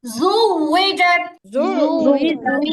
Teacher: জোর হবে না, গলা থেকে আওয়াজ করলে এটা আইনের মতো হয়ে যাবে , এটা গলা থেকে আওয়াজ হবে